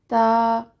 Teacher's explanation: تا تا باریک اور سخت حرف ہے، زبان کی نوک جب اوپر والے 2 دانتوں جنہیں ثنایا علیہ کہا جاتا ہے ان کی جڑ کے ساتھ لگے تو ادا ہوتا ہے